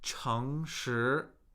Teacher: So with two consecutive second tones, we're rising, right? One mistake I see people make is they rise on top of what has already risen.